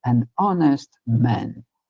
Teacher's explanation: Esse H é mudo. O primeiro som que nós temos é som de uma vogal